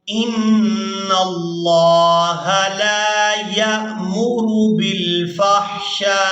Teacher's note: لفظ اللہ کے لام سے پہلے والا جو حرف نون ہے اس پر ہے زبر، تو یہاں لفظ اللہ کا لام پورا ادا ہوگا